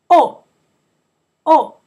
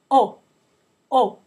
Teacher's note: you just need to remember not to put that W sound at the end it's not o like we say in English just plain o